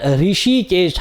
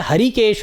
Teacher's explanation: ऋषिकेश हल्का से हा का साउंड आता है, हर्षिकेश बोलना या हरिकेश बोलना ये गलत है